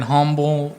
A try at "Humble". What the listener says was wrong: Well, you just don't pronounce the H.